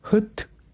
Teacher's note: This pronunciation is not the Japanese pronunciation of 'fu', but the correct English ' h' sound. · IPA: [hʊt]